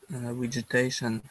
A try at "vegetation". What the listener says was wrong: Try and say the V pronunciation a little bit stronger instead of, it sounds like you're saying more of a W. The vegetation.